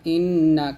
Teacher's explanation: শব্দে যদি নুন ও মিম বর্ণ তাসিক যুক্ত হয় তবে তা উচ্চারণ অবশ্যই নাকের ভিতরে কিছুক্ষণ চেপে ধরে অর্থাৎ গুন্না করে পড়তে হয় একে ওয়াজিব গুন্না বলা হয় অর্থাৎ এই গুন্নার নাম হচ্ছে ওয়াজিব